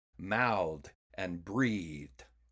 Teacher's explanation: And there are verbs that come from the same root words, but verbs like mouth and breathe use the other TH sound, the voiced TH sound, so they get a D sound added to become mouthed and breathed.